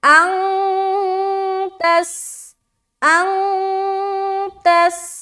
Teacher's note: نون کی آواز کو ہم ناک میں چھپاتے ہیں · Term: اخفا